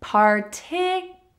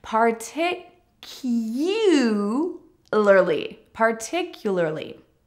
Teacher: Notice that there is a Y sound even though there is no Y in the spelling.